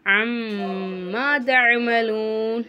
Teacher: மீமுக்கு மேலே சத்து வந்திருக்கனால நல்ல மீமை நம்ம நல்லா அழுத்தி உச்சரிக்கணும்.